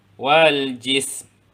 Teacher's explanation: Mati pada huruf sin. Dan kemudian masukkan pada tempat keluar huruf yang terakhir